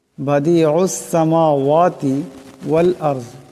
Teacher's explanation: এটা আইন, আওয়াজটা গলা থেকে আনতে হবে। এই আইন এই সিনকে ধরবে।